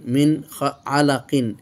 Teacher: নুন সাকিনের পর আইন এসেছে, এই জন্য এজহার হয়ে গেছে, এই জন্য ইখফা হয়নি। মিন এজহার স্পষ্ট হয়েছে। আলাকিন, আলাকিন আমরা ওয়াকফ করার জন্য এই